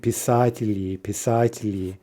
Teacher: give the soft ending to preserve that soft L